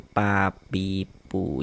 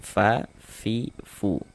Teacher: huruf fa itu salah satu huruf yang memiliki sifat hamas